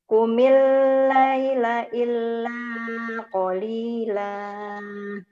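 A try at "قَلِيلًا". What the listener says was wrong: Qalila, jangan qalila. Qalila. Hati-hati, ada haknya di ujung. Qumil laila illa qalila qalila, jangan qalila, hati-hati.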